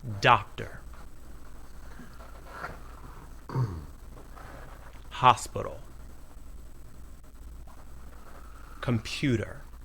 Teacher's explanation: Notice that clear vowel sound in the stressed syllable and the short, unclear vowel sound in the unstressed syllables.